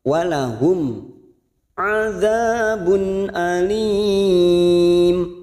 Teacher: Walahum mim sukun idhar safawi kita baca jelas tanpa mendengung namanya bacaan idhar safawi.